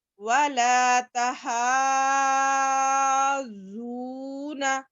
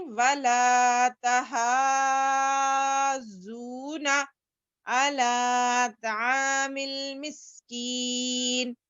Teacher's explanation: آگے دیکھیے، وَلَا تَحَاضُّونَ، دیکھیے ہاں پہ کھڑا زبر ہے، حروف مدہ، اس کے بعد تشدید آئی ہے، اس لیے ہم اس کو 5 الف کے برابر کھینچ رہے ہیں